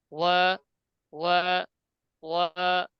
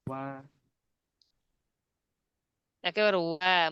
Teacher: ঠোঁট একটু গোল থাকবে, তবে একটু পাশের দিকে যাবে যেহেতু পাতলা হরফ। ওয়া, ওয়া, ঠোঁট গোল করে, ওয়া একেবারে ওয়া মুখ পাশ হবে না কিন্তু, ঠোঁট গোল থাকবে একটু পাশের দিকে যাবে।